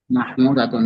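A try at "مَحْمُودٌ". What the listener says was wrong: হুয়া মাহমুদাতুন কই পেলেন? তা পাইলেন কোথায়? তা নাই তো, মাহমুদুন।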